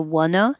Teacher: we write it with a's but we pronounce it the same uh sound and what i'm putting that together the t changes to a